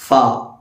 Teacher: ഫാ എന്ന അക്ഷരത്തിന്റെ മഹറജ് താഴെ ചുണ്ടും മേലെ മുൻപല്ലും